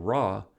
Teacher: the tongue tip is curled up toward the palatal area